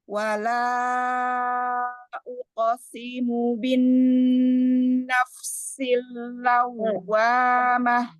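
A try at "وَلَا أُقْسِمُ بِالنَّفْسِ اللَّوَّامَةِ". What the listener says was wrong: Si-nya jangan jangan ditarik. Simu pendek. Si-nya jangan simu, tapi simu. Si-nya pendek.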